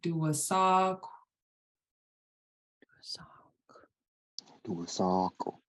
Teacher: has a w after it it's not it's own syllable but what that W the KW at the end of Doak tells you to do is to round your lips so you breathe out the k sound with your lips rounded · So you breathe out the K sound with your lips rounded. So it'll sound like duasak.